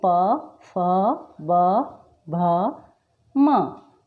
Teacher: हम जब प से म तक बोलते हैं तो उसमें हमारे जो होठ है वो एक दूसरे को स्पर्श कर रहे हैं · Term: ओष्ठव्य